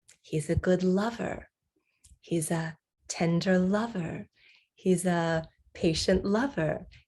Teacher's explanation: In all of those cases, I'm stressing the noun lover, and the adjective is just a little more descriptive information about the main thing, which is the noun.